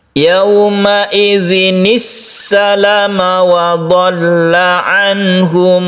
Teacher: untuk salam ini lamnya ini pendek ya, asli pendek dia. Jadi tidak dipanjangkan ketika kita mensukun atau mewakofkan.